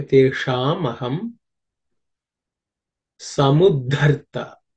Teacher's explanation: The sha is with the tongue, tip of the tongue pointed up.